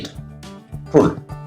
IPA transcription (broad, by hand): ɪd